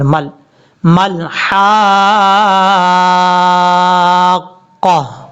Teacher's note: أَدْرَاكَ مل، میم کو جب لام سے ملائیں گے تو بیچ میں الف ہے پھر حمزہ ہے، دونوں حرفوں کو چھوڑ دیں گے، میم کو ڈائریکٹ لام سے ملائیں گے، میم لام زبر مل، مل حاقہ، یہ ہے سٹاپ کرنے کا طریقہ۔